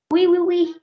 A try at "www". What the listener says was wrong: Instead of wee wee wee, okay, you can read this as www dot or triple w dot. But wee wee wee is a cute one.